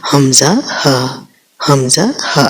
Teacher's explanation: بس آپ نے اس طرح نکالنا ہے کہ جیسے یہ درمیان والے حرف کہ آپ کے گلے میں کوئی چیز پھنسی ہے تو آپ اس کو نکال رہے ہوں۔ اور اقصی حلق جو نیچے والا حصہ جو سینے کی جانب ہے، وہاں سے حمزہ ہ، حمزہ ہ ادا ہوتے